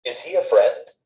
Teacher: When we ask a yes-no question, we often use rising intonation